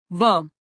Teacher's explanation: దంతోష్ట్యం పళ్ళు పెదవి రెండు కలిస్తే పుట్టేది.